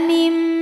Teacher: Mim ada hukum iqlab karena ada nun sukun yang menghadapi huruf ba. Maka bunyi nunnya diganti bunyi mim. Mim disertai bunyi dengung.